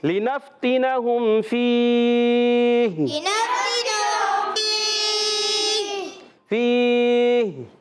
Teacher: آخر میں ہا کو جب وقف کرتے ہیں ہا کی زیر کو ساکن کر دیں گے تو ہو جائے گا مد عارض · اظہار شفوی, تو غنہ نہیں کریں گے